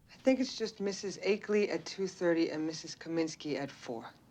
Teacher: Even if her New York accent was dropping the R sound, she pronounces the R in 30 and 4 a second later.